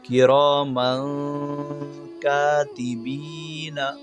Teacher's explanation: یہاں پر دیکھیے میم کے اوپر 2 زبر کی تنوین ہے، 2 زبر کی تنوین کے بعد حروف اخفا میں سے کاف آئے، اس لیے یہاں پر تنوین کو غنہ کے ساتھ پڑھیں گے، یعنی ناک میں چھپا کر پڑھیں گے